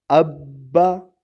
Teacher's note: اب جب میں نے بولا تو یہ اب یہاں جزم شو ہوا، ساکن ہو گیا، لیکن جب با کہا تو اس نے اپنی حرکت پڑھ لی